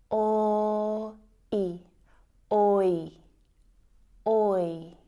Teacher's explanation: So the oi diphthong sound is actually made up of the o and I vowel sounds.